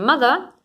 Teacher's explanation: the oral cavity so that it goes out through our nose so we close the lips we lower the velum